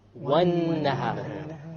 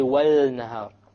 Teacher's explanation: We didn't say wal-nahar. We dropped the lam because it is a solar letter.